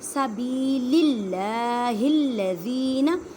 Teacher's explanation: اللہ کے لفظ کو باریک پڑھیں کیونکہ اللہ کے لفظ سے پہلے زیر ہے · زال کو ایک الف کی مقدار میں کھینچ کر پڑھیں کیونکہ ایک یا مدہ کا قاعدہ آ رہا ہے